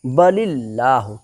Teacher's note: اللہ کا لام باریک ہوگا اس لیے کہ اللہ کے لام سے پہلے زیر ہے